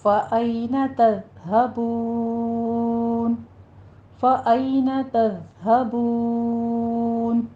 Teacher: آئینہ میں یا لین ادا کریں گے، تذ ذال کو سٹاپ کرنا ہے، تز بھی نہیں کہنا، تز زئی کی آواز نہیں آنی چاہیے، ذال ہے نرمی سے بغیر سیٹی کی آواز کے پڑھیں گے، ہا کو عکس حلق سے موٹا ادا کریں گے.